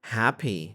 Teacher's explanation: two syllable nouns teacher and an adjective happy stress the first